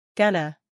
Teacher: acentuación en la primera sílaba gana pronunciación según el alfabeto fonético internacional gana a continuación un